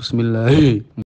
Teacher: makhrajnya ha itu dipangkal tenggorokan tenggorkan paling dalam dan disertai dengan angin